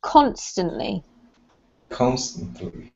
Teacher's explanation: has the emphasis on the first syllable